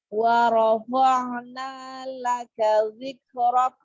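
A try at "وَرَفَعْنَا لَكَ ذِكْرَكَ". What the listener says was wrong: Nah, kafnya berikan hamas. Dzikrok.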